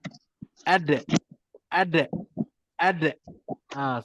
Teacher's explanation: Dal makhraj dekat lidah. Lidah tu bertemu je kat atas, terus lantunkan dia. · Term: huruf melantun